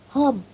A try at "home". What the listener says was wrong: But this one, stress the O longer. So it's home.